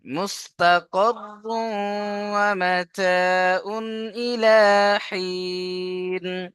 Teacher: এখানেও সেই তানবিনের পরে ওয়াও, তানবিনকে ওয়াও এর সাথে মিলিয়ে একালিফ গুণনা করতে হবে। একে ইদগামে নাকিস বলা হয়।